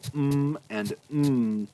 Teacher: to plug your nose there it's harder to make those sounds those sounds are being expressed through the nose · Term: nasals